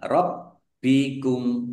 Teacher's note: Rob bikum, bak tasdid, ya, dibaca double baknya, ya, ada tasdidnya, ditekan dan ditahan